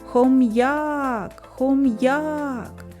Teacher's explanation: сила голосу більше падає на звук а а це і означає що наголос падає на звук а наступне